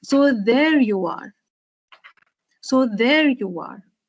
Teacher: you have stressed on the word there because in the given context, there is the important word